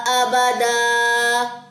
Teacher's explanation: دو زبر کا وقف آج سیکھا تھا نا، ایک زبر ڈراپ کی، ایک زبر الف کے ساتھ مل کے لمبی ہو گئی